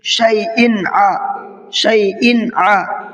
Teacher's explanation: وَهُوَ بِكُلِّ شَيْءٍ عَلِيمٌ، شَيْءٍ ع، شَيْءٍ ع، یہاں پر دیکھیے حمزہ کے نیچے 2 زیر ہیں، تنوین ہے اور اس کے بعد میں عین آ رہا ہے جو حروف حلقی کے حروف میں سے ہے، تو یہاں پر اظہار کر کے پڑھیں گے، غنہ اخفا کچھ نہیں